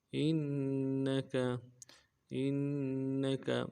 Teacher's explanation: حمزہ کو نون کے ساتھ ملانا ہے، نون کے اوپر تشدید زور دیں گے، کاف کو نرم سے ادا کریں گے